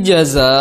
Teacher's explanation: jaza, ya, dia memiliki panjang 4 atau 5 harokat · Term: hukum mad wajib